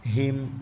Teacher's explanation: ہم، ہا کو سینے سے ادا کریں گے، حلق کا آخری حصہ جو سینے کے ساتھ ہے. ہم، میم ساکن کے بعد واو ہے تو ادھر اظہار ہوگا، مطلب غنہ نہیں کریں